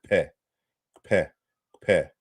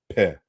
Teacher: And so, for example, when you're looking at Yoruba, note that, when you say pele or any kind of p sound in Yoruba, it's really kpe, kpe, kpe. It's a doubly articulated sound, kpe. But it's losing that feature in modern Yoruba today.